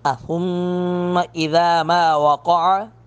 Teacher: میم مشدد پر غنہ کریں گے